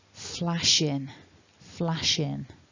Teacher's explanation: Flash ends in this sh, and then we've got a vowel at the beginning of the word in. So when we've got that pattern of consonant vowel, we get that kind of blending, so it almost sounds like one word.